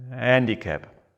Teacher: I don't eliminate the H, but I produce a soft and easy vowel at the beginning.